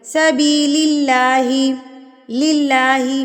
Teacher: اپنے ہونٹوں کو اسمائل کی طرح پھیلا لیں تو آپ کا جو لفظ اللہ ہے وہ باریک ادا ہوگا